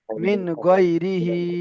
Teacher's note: দেখেন নুন সাকিনের পরে হুরুফে হালকি 6টা অক্ষরের মধ্যে থেকে গয়ন এসেছে। তাই নুন সাকিনের আওয়াজকে বিনা গুণনায় জাহির করে তাড়াতাড়ি পড়তে হবে